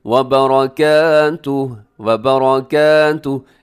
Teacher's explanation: रॉ अपने मोटा पढ़ना है